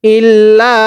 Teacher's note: এই লামের মধ্যে তিন আলিফ টানতে হবে। মদের হরফের উপর এরকম চিকন চিহ্ন, এরপরে লম্বা হামজা থাকলে সেখানে তিন আলিফ টানতে হয়।